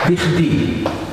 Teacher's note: The bet, the final v, has been elided.